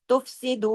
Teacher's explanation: دو کو دو حرکات کھینچا، واو مدہ کے ساتھ ہے